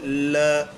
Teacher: ल ऐसा लगता है जैसे वायु जीभ के साइड से होकर के गुजर गई हो। · जब इस वर्ण का उच्चारण करते हैं ल का तो जीभ के बगल से वायु गुजर जाती है। बगल है, पार्श्विक का मतलब यही होता है, पार्श्व यानी बगल, साइड से, तो पार्श्व से वायु निकल जाती है। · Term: पार्श्विक व्यंजन